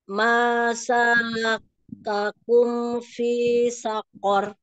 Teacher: Matawinya jangan panjang-panjang, dua harokat aja.